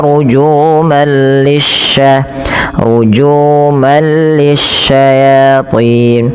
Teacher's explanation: langsung masukkan tanwinnya ke huruf lam yang bertasydid tapi tidak disertai dengan penahanan karena dia bila gunah. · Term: idgham bila gunah, idgham bila gunnah